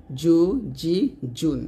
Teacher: জিম উচ্চারণ করতে হয় জিহ্বার মাঝখানে উপর তালুতে লাগিয়ে শক্তভাবে আদায় করতে হয়।